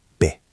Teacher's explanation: The T is at the end. We usually don't explode it. We stop it.